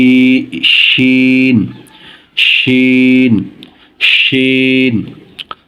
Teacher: উচ্চারণ স্থান জিহ্বার মধ্যখান, উপরে তালুর সাথে লাগিয়ে বাতাস জারি রেখে শক্ত হরফ